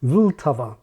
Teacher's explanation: Czech has a syllabic L that's stressed, something English can't do